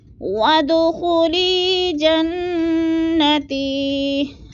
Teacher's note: جنہ نون مشدد ہے، اس پر غنہ کرنا ہے، تھوڑی سی آواز کو روک لینا ہے تھوڑی سی دیر میں